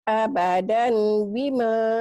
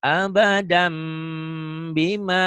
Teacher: Karena tanwin ini ketemu ba. Tanwin ketemu ba dalam ilmu tajwid berubah menjadi iklab. Menjadi bunyi M. Bindeng.